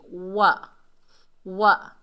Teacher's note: वाव को जब हम अदा करेंगे तो अपने होंठों को मुकम्मल गोल करेंगे। वा ऐसे करके, अगर आपने होंठ गोल नहीं किए तो आप समझें वाव सही से अदा नहीं हुआ।